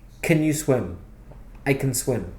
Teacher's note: you don't stress the word can. It's a weak form.